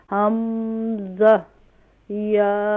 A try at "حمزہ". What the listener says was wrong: حمزہ نہیں ہوگا بلکہ حمزہ. یہاں پر اخفا نہیں کریں. حمزہ.